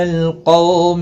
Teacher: قولین ہے، تھوڑا نرمی کے ساتھ کھینچ کر ادا کریں گے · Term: قاف مستعلیہ